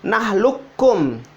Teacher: Ketemulah dua huruf ini. Yang huruf pertama ini tidak usah dibaca qafnya. Langsung masuk di kaf yang kedua. Nahlukum, tidak usah dibaca nahlukum.